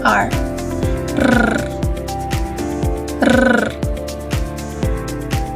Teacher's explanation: Ang hangin ay ilang ulit na hinaharang at pinababayaang lumabas sa pamamagitan ng ilang beses na paglapag ng dulo ng nakaarkong dila. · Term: Pakatal